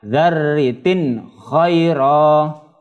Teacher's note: Kasrah tanwinnya dibaca jelas ketika bertemu dengan huruf halqi. Huruf H ini termasuk huruf halqi. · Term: izhar halqi